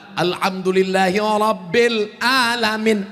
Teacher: Ra, tafkhim, hurufnya tebal.